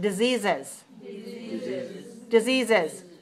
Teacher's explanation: Extra syllable because the word disease already has z at the end. We have to add a syllable to have three syllables, right?